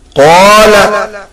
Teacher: in qala, the qaf with alif is pulled more than La